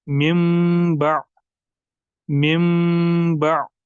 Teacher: नून साकिन जो होता है वो कन्वर्ट हो चुका होता है मीम साकिन में